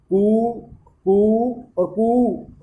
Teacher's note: पहला जो अपन ने उच्चारण किया उसमें ह्रस्व मात्रा है, दूसरे में 2 मात्रा है उसको दीर्घ कहेंगे, और तीसरी जो लंबा खींच के जिसका अपन उच्चारण करते हैं वह प्लुत हो जाता है। तो एक मात्रिक ह्रस्व होता है, द्विमात्रिक दीर्घ होता है, त्रिमात्रिक प्लुत होता है।